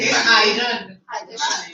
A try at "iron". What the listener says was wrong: No, iron. R should be, R should be silent.